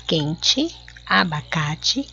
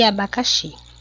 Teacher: algumas palavras terminam com a letra e e são pronunciadas como se estivessem com a letra i